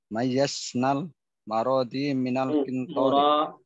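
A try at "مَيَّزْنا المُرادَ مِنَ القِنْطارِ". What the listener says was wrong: Mura bukan maro mimnya dhammah. Mayyazna al-murada.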